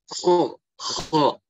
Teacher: Kho dia ada tekanan. Kayak orang ngorok istilahnya.